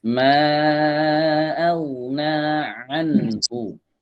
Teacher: An ini masih hamzah. An dari tenggorokan tengah. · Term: ain